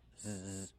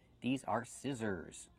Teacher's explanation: And the last S is also the zebra sound. Zzz, make the voice.